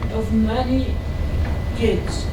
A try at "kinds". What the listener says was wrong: This is kids. No N. With an N, kinds.